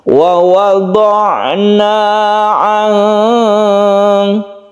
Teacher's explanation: Untuk ain dia mempunyai sifat tawasud, artinya tengah-tengah. Jadi kita tidak terlalu melepaskan dan tidak terlalu ditekan.